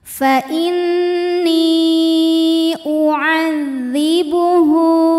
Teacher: Sedangkan hamzahnya yang u masuk ke kata kedua yaitu u'adzibuhu. Maka nunnya dipanjangkan, boleh 4 boleh 5 harokat. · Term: mad jaiz munfasil